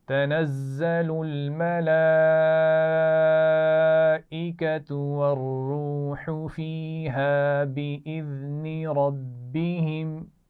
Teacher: اس میں زا ہے تنزل، تو سیٹی والی آواز آنی چاہیے